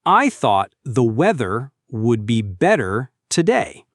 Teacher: Notice how the TH sound in thought and the requires your tongue to touch the top of your teeth.